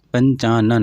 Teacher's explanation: ना की आवाज़ आ रही है बिंदी की जगह पे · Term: अनुस्वार